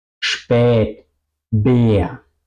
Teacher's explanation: Y podéis ver aquí la E, la boca está redonda. Spät, muy abierta. Spät, Bär, ¿ok? Muy abierta y redonda.